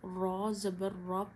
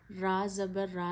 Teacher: जब रॉ पे ज़बर या पेश आती है तो रॉ को मोटा पढ़ते हैं। रॉ ज़बर रॉ पढ़ना है, रा ज़बर रा नहीं है, क्योंकि ज़बर है रॉ मोटी पढ़ी जाएगी।